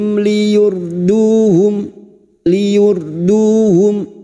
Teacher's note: R sukun yang didahului dumah kita baca tafkim